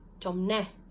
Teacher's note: You'll notice that the second syllable is accented.